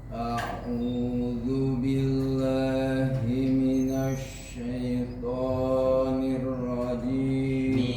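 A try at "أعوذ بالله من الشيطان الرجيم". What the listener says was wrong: Jangan sampai keluar dari hidung ya Pak De. Minasya, bukan minasyai, sya minasyaipo.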